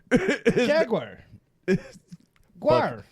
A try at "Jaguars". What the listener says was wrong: No, it's guar, not guire. This conversation is never gonna fucking stop because you are saying it wrong.